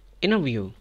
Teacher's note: Skip the T sound and say inner view.